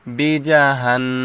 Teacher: নুনের উপর তাসদিদ আসছে এজন্য এটা ওয়াজিব গুন্না